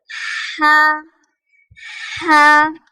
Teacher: ये हलक के दरमियानी हिस्से से अदा होता है, मिडल ऑफ द थ्रोट। हा जिसे हम कहते हैं ठंडी हा।